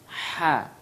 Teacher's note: Dia tempat keluarnya tengah tenggorokan.